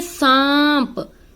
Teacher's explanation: आपके नाक और मुख दोनों से जो है श्वास वायु बाहर निकल रही है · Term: अनुनासिक